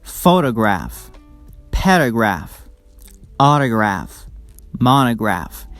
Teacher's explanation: We stress the first syllable in these words, which is the third syllable from the last.